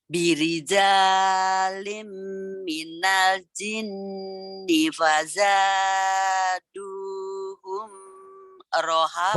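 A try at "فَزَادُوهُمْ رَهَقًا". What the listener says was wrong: Hum idhar. Fazaduhum rohaqo idhar. Jangan ditahan.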